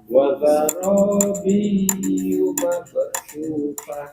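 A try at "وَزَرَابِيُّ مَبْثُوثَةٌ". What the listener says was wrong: Oke, ketika bi itu tidak perlu ditahan, cukup ditekan saja. Wazarabiyyu mabthusah.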